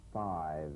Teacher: you set the lower lips vibrating that's what makes the sound you'll feel a gentle dark buzzing vibrations on the lower lip